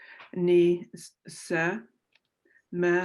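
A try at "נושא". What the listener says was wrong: Take one more look at that word again. Look at the vowel with nun.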